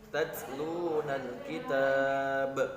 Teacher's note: Di situ karena kita waqaf atau berhenti maka ba-nya dimatikan. Nah, ketika ba dimatikan atau disukunkan, maka di situ terdapat qolah harus dipantulkan